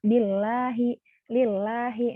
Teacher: lam jalalah dibaca tarkik kalau dia setelah kasroh